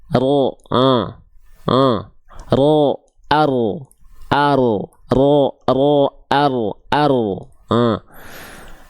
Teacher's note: ujung lidahnya dia enggak betul-betul nempel dia ada celah sedikit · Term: huruf ro